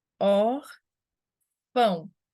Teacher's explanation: A gente tem or, que é a segunda sílaba contando de trás para frente, e a nossa sílaba forte, o nome disso é paroxítona.